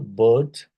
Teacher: open mid central unrounded vowel, bird